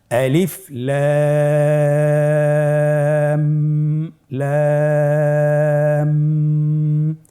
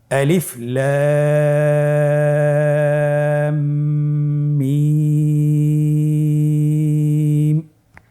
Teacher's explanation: এখানে লামের উপর মোটা চিহ্ন রয়েছে এবং মিমের উপর মোটা চিহ্ন রয়েছে। মাঝখানে আমাদেরকে একটি গুণনা রয়েছে, ওয়াজিব গুণনা, সেই গুণনাটি 1 আলিফ টেনে পড়তে হবে।